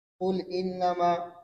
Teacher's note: حمزہ قطعیہ کا حرکت نقل کر کے ماقبل لام ساکن کو دے دیتے ہیں اور حمزہ کو حذف کر دیتے ہیں